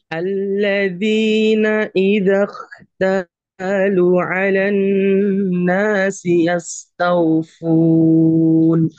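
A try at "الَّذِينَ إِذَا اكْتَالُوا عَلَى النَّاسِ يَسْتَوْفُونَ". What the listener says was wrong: আপনি ইজাক তালু বলছেন, হ্যাঁ, সেটাতে কাফের মাখরাজ হয়নি। কাফের হবে ইদাক তালু।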